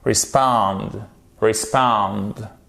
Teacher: vous avez donc un I court. Et le I court, il se prononce presque comme un E.